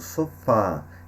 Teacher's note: indica que a vogal é aberta então no caso sofá tá nós vamos perceber que esse a tem um som aberto já ou se confere o circunflexo vamos mostrar que a vogal